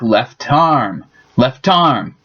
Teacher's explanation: the T from left tends to jump over to the other word